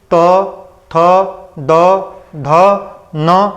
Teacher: हमारी जीभ जो है ऊपरले दांत को बीच में आकर के जो है टच करती है। तो यह जो है दता वर्ण थे।